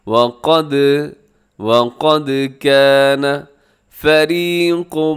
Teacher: دال ساکن ہے، حروف قلقلہ میں شامل ہے، تو آپ اس کو ہلائیے گا۔ وقد کان فریق، فریق کے آخر میں تنوین ہے، دو پیش نظر آ رہے ہیں، اسے تنوین کہا جاتا ہے۔